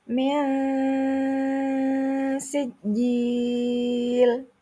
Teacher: Di situ ada nun sukun bertemu dengan sin. Bacaannya samar. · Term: ikhfa